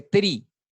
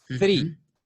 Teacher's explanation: cuando usted dice tres, tiene que poner la lengua entre los dientes. O sea, es interdental.